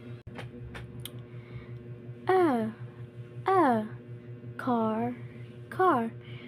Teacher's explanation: When you say ah, your tongue is down at the back of your mouth. Your mouth is open and your lips are relaxed.